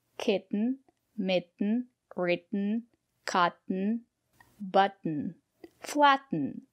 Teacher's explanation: we pronounce the letter t as a stop T put your tongue up and stop the air don't release the